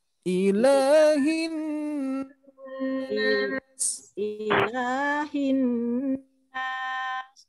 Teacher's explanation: La-nya kepanjangan, Bu. Harus satu ayunan.